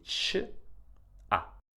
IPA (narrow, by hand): t͡ʃa